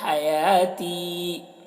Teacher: ہا کو حلق سے ادا کریں گے